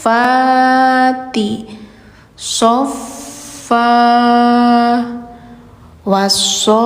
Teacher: panjang enam harakat lalu ditekan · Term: mad lazim